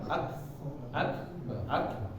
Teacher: kalau sukun nah tipis kayak ada loncatan